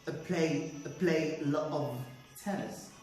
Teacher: that's the schwa okay that's why i said the play and play sounds louder which means i stressed it